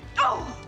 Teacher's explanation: oh communicates disappointment. Therefore, its tone is low and short.